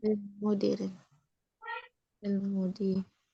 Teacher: Nah, di sini penulisannya al-mudiri hamzahnya hilang ya. Jadi lamnya langsung nempel ke berikutnya.